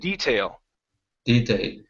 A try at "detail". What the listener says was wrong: when you're pronouncing your L, your tongue is in the back of your mouth, saying detail. Okay. With the L in English, your tongue needs to be forward in